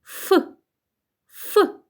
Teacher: губи і зуби при вимові звука ф створюють перешкоду і повітря вільно не виходить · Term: звук ф